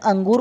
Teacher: अनुस्वार स्वर के बाद आने वाला व्यंजन है जिसकी उच्चारण ध्वनि नाक से निकलती है।